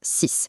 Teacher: Quand on le prononce tout seul, le X à la fin sonne exactement comme un S. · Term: un son S